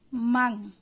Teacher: এবারে মিম নুন জবর মান, নুন সাকিনের পর ইকফার হরফ তা আছে। এই মিম নুন পড়ার সময় নুনটিকে সম্পূর্ণরূপে উচ্চারণ না করে অনুস্বারের মতো করে পড়তে হয়। মাং, মানটা মাং, মাংয়ের মতন শোনা যায়।